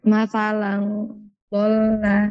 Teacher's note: لم تنوين بالفتح مخفى عند الضاء المفتوحة بغنى حركتين